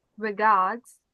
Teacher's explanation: You don't want that R in front of the D.